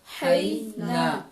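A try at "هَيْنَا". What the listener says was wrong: हाई तो सही पढ़ा आपने, ना पूरी आवाज है, नून के ऊपर छोटी जबर है और साथ अलिफ ने उसकी आवाज को क्या कर दिया? पूरा कर दिया। अब इसको थोड़ी सी प्रैक्टिस करें कि अगर अलिफ ना होता तो जैसे बई ना पढ़ा है ना आपने, तो ये हई ना होना था।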